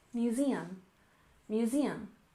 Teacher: museum with stress on the second syllable